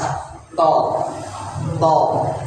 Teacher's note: makhraj huruf ta itu kan ujung lidah ketemu sama gusi atas